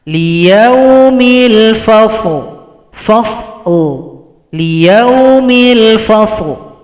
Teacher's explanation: Kalau berhenti lam disukunkan, berikan bunyi vokal.